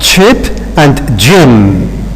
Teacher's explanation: a stop followed by a fricative sound. And they have got more or less the same place of articulation. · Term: affricate